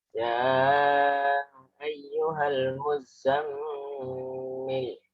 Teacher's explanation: Itu ada 2 tasdid ya. Muzza itu tasdid, za-nya double, dan mimnya itu guna.